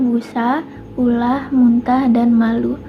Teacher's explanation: Lalu yang kedua ada fonem U, yaitu vokal atas, belakang, dan bulat